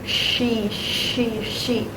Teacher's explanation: Second, you can round your lips slightly. Third, stay relaxed and do not vibrate because it's voiceless. So, um no vibration.